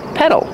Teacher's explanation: the fast D in the middle